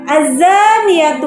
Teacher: alif lam mati yang bertemu dengan salah satu huruf Syamsiah dibaca lebur atau idgham sehingga bunyi Al tidak dibaca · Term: alif lam syamsiah